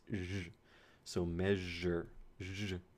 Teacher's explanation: And the other symbol, ej, would be a j. So this is the counterpart to sh with some vocal vibrations